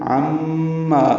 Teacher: یہ میم مشدد ہے، یہاں پہ غنہ ہے، آواز ناک کے بانسے میں لے جا کر دو حرکات تک ٹھہرائیں گے۔ عما، ما الف مدہ ہے، دو حرکات لمبا کریں گے۔